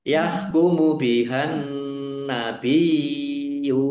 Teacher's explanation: Langsung masuk ke huruf berikutnya yaitu nun, ditandai nunnya ada tasdidnya. Nun tasdid dibaca gunnah atau mendengung, ditahan biar tampak dengungannya.